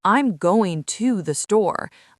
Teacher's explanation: I'm emphasizing the word to,